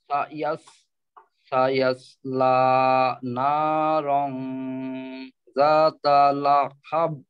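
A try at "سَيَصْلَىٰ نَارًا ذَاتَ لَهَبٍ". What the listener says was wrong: কলকলাটা আরেকটু স্পষ্ট করবেন, অর্থাৎ ফিরতি যে আওয়াজটা কলকলার, লাহাব, হাব, এই ব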